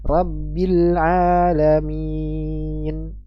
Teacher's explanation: pada akhir bacaan ya rabbil alamin empat harakat rabbil alamin Min Ingat jangan sampai ada dengung ketika memanjangkan hurufnya